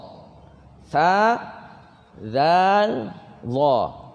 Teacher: Kaedah dia adalah kenakan hujung lidah ke gigi atas. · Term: keluar lidah